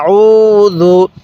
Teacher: আইনের মধ্যে কিন্তু আমি এক আলিফ টান দিছি পেশের পরে এরকম ওয়াও সাকিন থাকলে এক আলিফ টানতে হবে